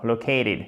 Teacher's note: il y a l'accent tonique qui efface un peu, notamment la première partie du mot, mais en plus, vous avez un changement de consonne